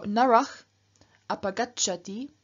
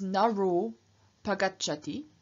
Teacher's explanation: And if you have ach plus a vowel at the beginning of the next word, again the visarga drops, and we're left with just r, except, and this is exception one that you can here see on the right, if you have ach plus short a, then the ach changes into o and the a disappears. And so narach apagacchati becomes naro pagacchati, the man goes away.